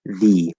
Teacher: So it's a voiced th, which is a difficult sound for many English learners, and then the sound e, the vowel sound e